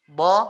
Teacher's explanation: Jadinya PR adalah bo-nya ya. Tolong kalau bo-nya itu tidak usah dikeluarkan anginnya ya. Bo, lengket saja.